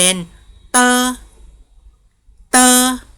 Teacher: ตัวดีแทนเสียงในภาษาจีนก็คือเสียงตเต่านะคะไม่ได้ออกเสียงดเด็กนะคะ